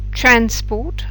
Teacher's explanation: you put the stress on the first syllable it's transport is trans is longer and it's higher in pitch and it's louder than Port